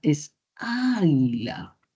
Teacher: la mayor fuerza de voz está en la vocal inicial, que es la A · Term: sílaba tónica